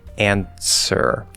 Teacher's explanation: there's no actual t there because n is in the same place we'll get the same type of sound like there's a ts but there is no t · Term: ts illusion